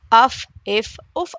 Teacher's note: ثنایا علیہ کا سرا، نیچے کے ہونٹ کا اندرونی حصہ، یہاں سے فا ادا ہوتا ہے